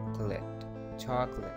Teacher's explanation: Now, just imagine that O is not existing over here and speak like this, chocolate. Just put stress over the first vowel